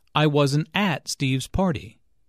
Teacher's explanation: notice that the emphasis here is on at although prepositions normally have weak stress